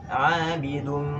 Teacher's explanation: ada kata 'abidum yang mana dengung ini dari hidung. 'Abidum Di sana nun bertemu dengan domahtain, nun dan saudaranya bertemu dengan mim yang tasydid. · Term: idgham bi gunnah